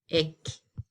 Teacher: as the rule says, I have to stress the second to last